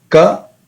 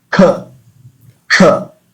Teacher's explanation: in the consonants we have alpa prana ka from the kantha ka, and then aspirated sound